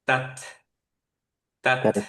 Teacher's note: তায়ের মখরাজটা হচ্ছে ইনসিসার্স এর উপরে যে গামসটা, সেই গামসে। সো আপনার এই যে সামনের উপরের দিকে যে দুইটা বড় বড় দাঁত, তার যে গামসটায় সেইখানে, রাইট।